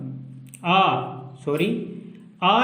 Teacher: आ में पूरा मुंह खुला रहता है, इसलिए इसको विवृत के अंतर्गत रखा जाता है।